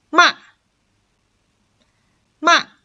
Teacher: you're gonna pronounce it from five to one